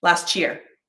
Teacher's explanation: the t sound actually becomes a ch sound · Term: assimilation